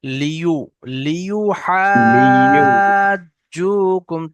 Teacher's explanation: ইয়ার উপরে পেশ থাকলে সেই সময় উচ্চারণ করার সময় ঠোঁট দুটো একটু গোল হবে। লিউ, লিউ হাজুকুম, তবে উচ্চারণ করার সময় ভাবতে হবে যেন টান না হয়ে যায়, লিউ এরকম যেন টান না হয়। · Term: ইয়া পেশ